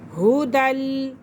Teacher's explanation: دال کو لام کے ساتھ ملائیں گے کیونکہ لام مشدد ہے اور مشدد حرف جو ہے اپنے پہلے والے حرف کے ساتھ مل کر پڑھا جاتا ہے۔